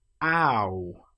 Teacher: The next one also has quite a difference between the starting shape and the finishing shape. We start with a. We end with oo. Ow. If we write this as a standalone word, it would look like o wow.